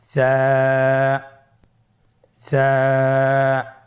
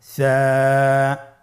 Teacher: সা হরফটির মাখরাজ হলো উচ্চারণের স্থান জিহ্বার আগা সামনের উপরের 2 দাঁতের আগার সঙ্গে লাগিয়ে উচ্চারিত হয়।